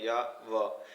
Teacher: और या और वा तो इनको अर्धस्वर कहा जाता है कि ये इनको बोलते समय या व तो इनको बोलते समय स्वर सा आभास होता है यानी उच्चारण करते समय ये स्वर से प्रतीत होते हैं लेकिन होते हुए वैसे व्यंजन है, तो इसके लिए इनको अर्धस्वर भी कहते हैं।